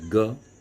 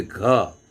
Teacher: ऐसे आप बोलिए ग, कम श्वास छोड़ेंगे, लेकिन जब आप बोलेंगे घ तो आपको उससे ज़्यादा श्वास छोड़ना है। तो जिसमें आप ज़्यादा प्राणवायु छोड़ते हैं उसको महाप्राण कहा गया, और जिसमें अल्प प्राणवायु छोड़ते हैं उसको अल्प प्राण कहा गया।